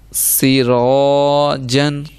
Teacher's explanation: را کو موٹا کیونکہ زبر